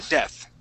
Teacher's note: So we say the word death, and our tongue goes between our teeth. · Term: TH sound